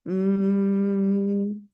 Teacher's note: en la m si bien es cierto estamos haciendo una oclusión no hay ese escape del aire por la boca porque yo puedo decir MM y no estoy abriendo la boca y el sonido está ahí